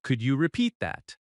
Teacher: Your voice rises gently at the end because it is a question. "Could you repeat that?" That rising tone is natural and polite.